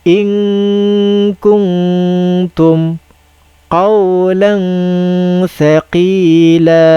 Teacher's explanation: Okey, kita dengung tapi bukan dengung sangat, tidak juga jelaskan sangat. Cikgu tahan suara macam dengung tapi cikgu tidak tutup mulut. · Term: ikhfa